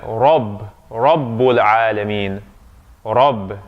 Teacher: So when alif or fatha comes after the ra, it's going to sound like ah. It's that deeper sound, because ra is emphatic. Ra is emphatic.